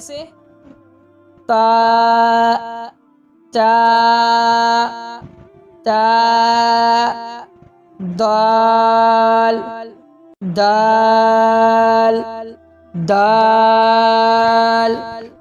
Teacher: इसका सिरा जबान ऊपर के सामने वाले दांतों की जड़ से मिलकर करता है।